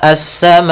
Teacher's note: Kemudian pada lafal sama, as-sama'u, di sini ada mad wajib muttasil, yaitu adanya huruf hamzah yang datang setelah huruf mad, maka ia kita panjangkan sepanjang 4 harokat